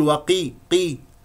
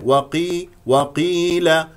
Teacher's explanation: القاف ايضا هنا مفخمه مرتبه اخيره لانها مكسوره والواو مستفه وقيل لا تقل وقي قي لا هذا ليس صوت القاف وقي